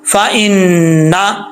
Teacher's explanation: नून के ऊपर शद है तो गुना करेंगे